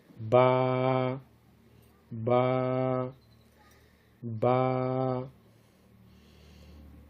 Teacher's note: با بند ہونٹوں کے گیلے حصے سے ادا ہوتی ہے.